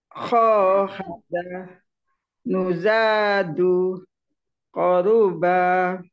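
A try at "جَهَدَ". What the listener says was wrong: Ja ya, bukan ho tapi jahada.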